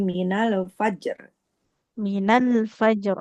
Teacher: lam sukunnya dia enggak boleh memantul